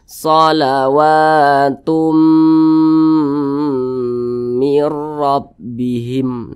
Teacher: suaranya itu kita tahan kita panjangkan dua harakat atau kira-kira dua ketukan